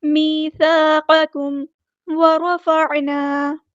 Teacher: आइन को वुस्ता हलक से अदा करना है, यानी मिडल थ्रोट से अदा करना है